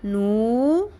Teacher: نون پیش واو نو یہاں پہ بھی مد اصلی ہے. ایک الف کے برابر, نو ایک الف کے برابر.